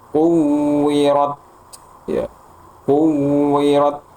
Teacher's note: Tahan dulu syiddah dulu suaranya tertahan kemudian alirkan secukupnya napasnya.